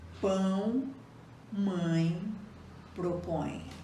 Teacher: Nos ditongos nasais, o som é emitido pela boca e também pela nariz.